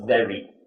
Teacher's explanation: Try not to roll the R, just very.